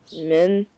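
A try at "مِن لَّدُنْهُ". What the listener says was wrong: Noon is not redder. There is no noon here. Mil M-I-L, Mil Mil La Dun. Who? Milla dun who?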